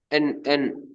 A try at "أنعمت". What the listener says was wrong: எஸ் ஏ அல்ல, அ அ அல்ல, நார்மலா உச்சரிங்க. அ அன் அன் அந்த எழுத்து சேர்த்து உச்சரிங்க. அன் அன்அம்த இப்ப சேர்த்துக்கோங்க. அன்அம்த எப்படி, அன்அம்த.